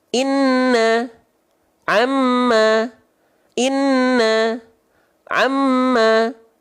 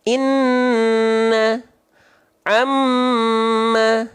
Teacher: Nun tasydid itu ditahan dua harakat dua harakatnya harus kadar gunah